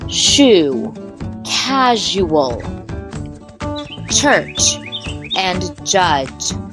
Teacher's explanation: we move forward the alveolar palatal sounds are those that are made by using the tip of your tongue behind your alveolar Ridge closer to your palate these are sounds like shoo casual church and judge these sounds